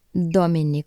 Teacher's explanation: it is pronounced as a dental sound with the tongue touching the back of the front of your teeth